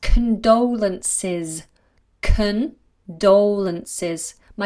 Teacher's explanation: there's a schwa there at the beginning